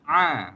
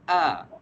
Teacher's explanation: Huruf ain kita kena sebut dia belah dalam sikit. Okey, beza dengan huruf hamzah. Kalau huruf hamzah kita akan baca dia a.